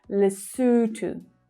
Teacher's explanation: So the stress is on the second syllable there. That's the /uː/ as in 'zoo' vowel sound.